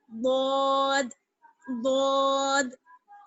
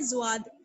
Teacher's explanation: اس کی آواز بھاری اور موٹی ہوتی ہے, یعنی زبان آپ کی چوڑی ہو جائے گی پڑھتے وقت